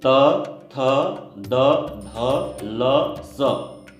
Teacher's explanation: त, थ, द, ध, ल, स, ये क्या है? ये दंत्य कहलाते हैं, क्योंकि दांतों के सहायता से इनका उच्चारण हो रहा है, हमारी जिह्वा दांतों से स्पर्श करती है। त, थ, द, अगर दांतों को ना लगाए तो इनका उच्चारण ना होगा, तो इसी कारण इनको हम दंत्य बोलते हैं।